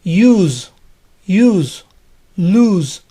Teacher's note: la s suena como zeta